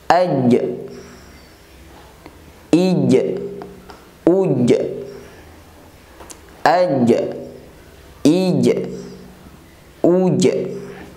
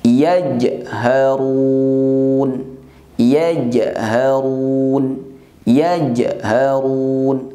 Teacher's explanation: Nah, kemudian yang kedua huruf jim. Saat pengucapan huruf jim, maka suara tertahan, terutama ketika huruf jim berharokat sukun.